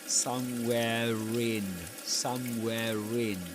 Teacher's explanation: you wouldn't usually pronounce the rah in somewhere in in this accent, but this is an exception because right after it comes the vowel sound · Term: linking